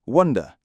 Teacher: Lots of speakers in the north of England will use the uh vowel sound like in put